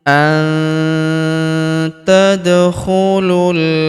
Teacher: Am hasibtum an tadkhulul, huruf nun sukun bertemu huruf ta, maka nun sukunnya melebur ke huruf ta. Kita baca dengung dan samar. Dengungnya kita tahan 2-3 harokat.